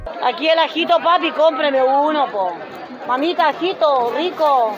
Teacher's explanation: vão cantando as palavras, vão falando muito rápido as palavras, de acordo com a melodia chilena